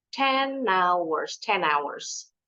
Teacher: Jadi huruf n-nya seperti didorong ditempel ke bunyi huruf vokal hours · the N consonant sound at the end of the word 10 is pushed to the beginning of vowel sound in hours. Karena tadi H-nya sudah dibuang, jadi bunyinya di bunyi huruf hours.